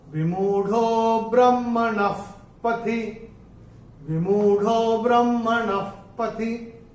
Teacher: अभी चौथे चरण में न के बाद जो विसर्ग आ रहा है, और विसर्ग के बाद का अक्षर है प, और विसर्ग के बाद अगर प या फ आता है तो विसर्ग का उच्चारण होता है फ